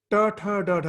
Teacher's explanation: you have to roll back your tongue to touch the palate.